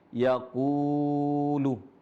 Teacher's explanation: huruf qaf berharokat dhammah dan setelahnya ada huruf mad yaitu wawu sukun. Makanya di sini dibaca panjang 2 harokat